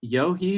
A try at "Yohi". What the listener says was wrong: You're close. It's Yo-E. You just kind of forget the H is there.